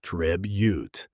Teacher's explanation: stress on the first syllable, tribute. Keep that first vowel short and sharp.